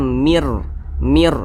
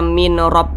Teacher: Maka yang dimasukkan itu bunyi nun ini dimasukkan langsung ke huruf ro. Jadi dibaca mir gitu.